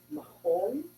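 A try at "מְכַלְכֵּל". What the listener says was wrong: Not whole. Me, chal, kel. Mechakel.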